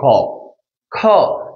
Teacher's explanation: যেহেতু বাতাস বেশি যাচ্ছে, সেটাকে বলা হচ্ছে মহাপ্রাণ, মানে বেশি করে, অল্প করে গেলে সেটাকে বলা হচ্ছে অল্প প্রাণ।